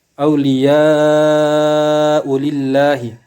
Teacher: Itu hukum bacanya mad wajib munfasil, mad wajib muttasil, yaitu apabila ada mad tabi'i setelahnya huruf hamzah dalam satu kalimat, maka hukum bacaannya mad wajib muttasil. Cara membacanya dipanjangkan, wajib dipanjangkan 6 harokat